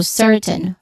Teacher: certain, which there's the first syllable is stressed syllable